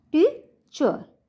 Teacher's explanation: टीचर के अंदर 2 syllable हैं, और पहले वाला जो सिलेबल है उसके ऊपर ज़्यादा जोर लग रहा है दूसरे की बजाय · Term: स्ट्रेस